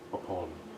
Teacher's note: Can the second vowel be darker in the British? Yeah. Upon.